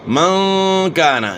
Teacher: نون ساکن کے بعد اخفاء کے 15 حروف میں سے کاف ہے تو یہاں غنہ اخفاء کے ساتھ ہوگا